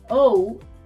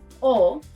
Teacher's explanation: Next, la letra O, letter O. Unlike English, where the O is sort of rounded with the lips, the pronunciation of la letra O is shorter and sharper. O in English, O en español.